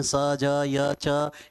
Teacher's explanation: तालु वाले वर्ण हैं स ज य च, इनकी बार बार आवृत्ति हो रही है।